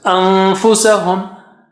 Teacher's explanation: Just go as if you are about to say fa, and then take the sound out from your nose.